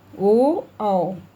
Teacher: कंठोष्ठ्य, मतलब गले तथा ओठ से